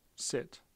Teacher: the s for example is a fricative the I small capital I that's a vowel and the T is a stop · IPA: /sɪt/